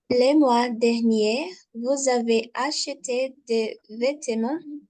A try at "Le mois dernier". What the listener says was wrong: Le mois dernier, alors là, on ne prononce pas le R, on va dire le mois dernier.